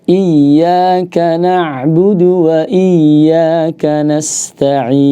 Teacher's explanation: Di huruf ain jangan sampai kana budu ya, jangan sampai menjadi hamzah ya. Kemudian dari huruf ta'nya ya, ta'nya hati-hati jangan sampai ditebalkan.